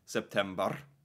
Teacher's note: Norwegians do this roll the RS